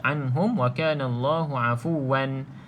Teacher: Wan itu bermaksud kita baca jelas. Tak boleh dengung. Di sini izhar haki kita panggil.